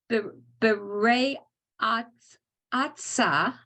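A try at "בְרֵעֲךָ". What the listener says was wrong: No, there's no s here. This is an ayin. V'rei acha.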